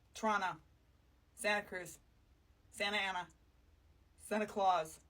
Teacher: We tend to drop a lot of the T's in the middle of our words.